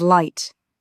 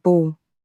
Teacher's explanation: It's the difference between the clear, upfront L of light and that deep, almost shadowy L at the end of ball.